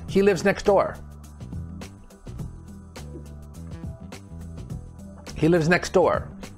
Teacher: so we drop the t sound it just sounds like next door